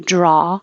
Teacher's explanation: draw has the vowel ah you just leave your mouth open